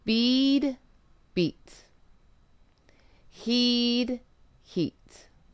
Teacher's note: The truth is we can't control our vocal cords well. So what we do when there's a voiced sound at the end of a word is we hold the vowel that comes before it for two beats.